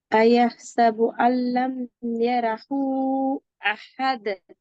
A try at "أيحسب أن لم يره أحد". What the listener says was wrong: எத்தனை கவுண்ட் நீட்டணும்? எத்தனை கவுண்ட் இழுக்கணும்? எத்தனை செகண்ட்ஸ் நீட்டணும்? அதுதானே 3 செகண்ட்ஸ் நீட்டப்படுது இல்லையே.